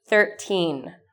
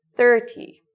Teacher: the first part is long, thir; the second part is short, ty